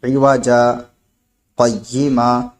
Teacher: سکتہ کریں گے تو دو زبر کو ہم الف سے بدل دیں گے. یہ سکتہ کا حکم ہے.